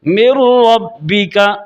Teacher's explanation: اب نون را میں داخل ہو رہا ہے غنہ کے بغیر، اسے کہتے ہیں ادغام بلا غنہ۔